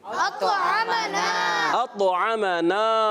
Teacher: ایک تو قلقلہ بھی کرنا ہے اور طا کو موٹا رکھنا ہے، تو معنی تبھی بنیں گے نا کہ اس نے ہمیں کھلایا۔